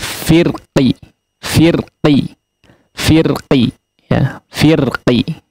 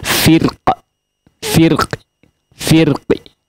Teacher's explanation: tidak mantul seperti qalqalah ya, tapi dikasrohkan cuman tidak sempurna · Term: raum